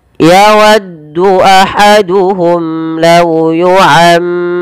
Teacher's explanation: Dan mim mati bertemu lam. Ini kita hukumi dengan bacaan izhar syafawi. Dibaca dengan jelas suara mimnya.